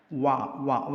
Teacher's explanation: 2 ചുണ്ടിൻ്റെ 2 ഭാഗം തൊട്ടുകൊണ്ടാണ് നമ്മൾ വാ പറയുന്നത്